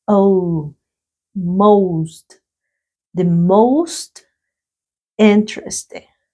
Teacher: The most, aquí tenemos la vocal O. Esa O suena una O y una U, como una O y una U.